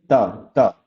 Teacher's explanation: देखिए आप त वर्ग का जब उच्चारण करेंगे आप देखेंगे कि आपके जो जीभ का अग्रभाग है वो आपके ऊपर वाले दांत को पीछे से स्पर्श कर रहा है।